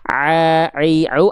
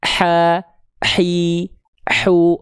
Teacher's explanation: Ain enggak pakai nafas tapi nekannya sama kayak huruf H kecil. Kalau H kecil dia keluar nafasnya.